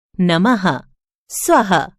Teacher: यह विसर्ग है इसका उच्चारण करते समय ह की तरह ध्वनि निकलती है